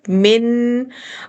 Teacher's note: آپ کی زبان نون کے مخرج پر جا رہی ہے اور ناک میں نون کا ساؤنڈ رک رہا ہے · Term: مکمل غنہ